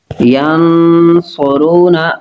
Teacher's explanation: نون ساکن کے بعد صاد حروف اخفا ہے تو غنہ کریں گے